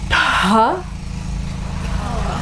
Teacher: And then you have an aspirated ta